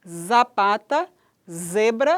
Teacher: o z, que é fricativa, alveolar, vozeada. Então, ele é uniforme esse som em início de sílaba em todos os dialetos do português brasileiro, podendo ocorrer com articulação alveolar ou dental.